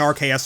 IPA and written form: 'ɑrkeɪəs (Arceus)